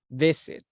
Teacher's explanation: La entonación va para abajo. Visit. Y como usted lo estaba diciendo, era con la entonación para arriba.